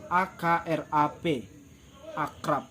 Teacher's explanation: yaitu akrap akrab jadi b nya nggak tampak